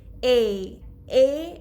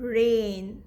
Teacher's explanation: You can hear A and I both, but it's a blended sound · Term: diphthongs